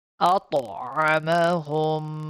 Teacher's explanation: Make sure the ta is bouncing back here because it's a qalqala letter.